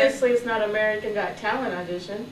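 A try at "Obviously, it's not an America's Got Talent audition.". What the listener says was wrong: America's Got Talent. You said American.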